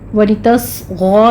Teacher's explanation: صاد کو پر پڑھنا ہے، اور اس پر ہمس ہوگا، سٹی کی آواز آنی چاہیے